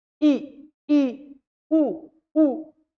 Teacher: इन्ह बोलते वक्त मुख बहुत कम खुलता है बहुत कम